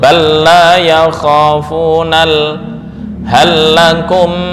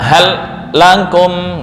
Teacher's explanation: idgham pada huruf lam itu terjadi karena tamathul yaitu kesamaan makhraj dan sifat